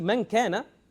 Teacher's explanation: You only have the sound from the nose, but you don't have the tongue part. So you say man kana, You add the tongue, then you get the noon. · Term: ghunnah